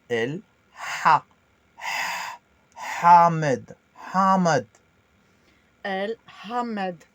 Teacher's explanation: Le H expiré dans la gorge d'une façon aiguë